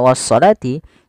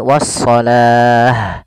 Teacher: awalnya kalau dia ada huruf ta marbutah seperti ini awalnya wasalati kalau kita wakaf dia mengganti kita ganti dengan huruf ha yang disukunkan